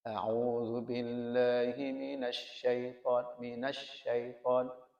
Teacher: Ini angin menyebar itu seakan-akan dari sepenuh mulut ya. Padahal tafasyi itu angin menyebar di atas lidah.